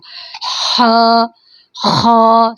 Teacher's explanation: خا ہماری گردن کا تھروٹ کا جو سب سے اوپر والا حصہ زبان کے قریب ترین ہوتا ہے اس کو ادنی الحلق کہتے ہیں، وہاں سے یہ ادا ہوتا ہے، اور یہ پر حروف میں سے ہے، ہیوی ورڈ، تو اس کو منہ کھول کر ادا کیا جاتا ہے پر ورڈ کو، اور جس کے آگے بھی الف لگا ہو یا اوپر فتح لگنی ہو تو اس کو منہ کھولیں گے نہیں تو پھر صحیح ادا نہیں ہو سکے گا۔